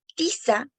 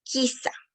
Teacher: cambia la consonante oclusiva dental tiza por la consonante oclusiva velar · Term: posteriorización